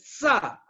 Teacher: अब हमारे जो युवा एक्टर है सा जो बोलते हैं सा, सामान और शाम, तो शाम में जो श है तालव्य श जिसको बोला जाता है, जो तलुआ से बोला जाता, यानी स और श के उच्चारण में जो फर्क है उसको समझिए। दांत से जब आपका जबान लगता है और हवा निकलती है सटते हुए सा, जो अंदर से जो आपका वायु जो है वो बाहर की तरफ निकलती दांत और जबान के बीच से, सा सा, सामान।